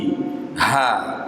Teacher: ha keluar dari tenggorokan bawah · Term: makhraj ha